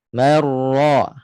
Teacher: Bila tengah lidah tak naik, dia terbuka sikit keluar. Bila ra itu berbaris atas, pangkal lidah naiklah untuk menebalkan ra tu. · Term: ra tebal